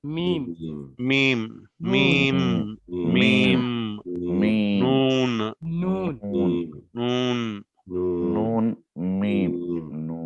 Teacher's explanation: आवाज को नाक में जो है आप गिरा रहे हैं, नून थोड़ी देर तक उसको ट्रैवल करा रहे हैं नाक में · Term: गुन्ना